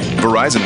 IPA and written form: vəˈraɪzən (Verizon)